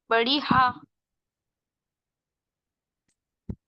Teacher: It is pronounced from the bottom of the throat and the breath should go inside the throat.